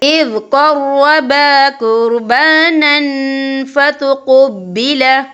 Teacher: دیکھیں اِذْ قَرَّبَا قُرْبَانًا، نن یہاں نون کے اوپر تنوین ہے، تنوین کے بعد جو ہے فا آ رہا ہے، اور فا جو ہے اکفا کا ورڈ ہے، تو ہم یہاں اکفا کریں گے، تنوین کی آواز کو ناک میں چھپائیں گے